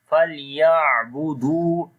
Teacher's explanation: on the ayn we make tawassut, like the moderation sound of ayn.